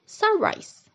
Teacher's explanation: compound which combines two nouns like in the word sunrise. The stress is on the first syllable.